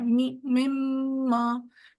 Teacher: मीम पर जो हम जोर दे रहे हैं वो दरअसल उसका गुना है म मा तो वो आवाज हमारे नाक में घूम के आवाज